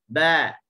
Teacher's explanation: sifat yang kuat yang ada pada huruf ba adalah sifat al-jahru, tak ada angin, sifat syiddah, suara tertahan, dan sifat qalqalah · Untuk huruf ba ni, kalau dari sudut makhrajnya, dia adalah huruf yang bersifat yang berada di syafatain, bibir atas dengan bibir bawah. Pertemuan bibir. Relax dalam keadaan yang neutral, jangan kita tarik, jangan kita tak relax.